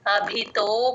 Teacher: బ కి మహాప్రాణం ఉంది గమనించండి అభితో ఆ బంద రకారం ఉన్నప్పుడు తో కి బా ని జాయిన్ చేసి